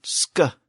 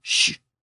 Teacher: The original SK sound, sk, is pronounced in the back of the throat. But the newer sh sound, sh, is pronounced in the front of the mouth. So the sound shifted from the back of the throat to the front of the mouth.